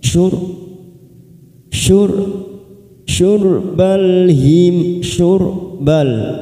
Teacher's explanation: ora sukun yang didahului dhammah kita baca tafkhim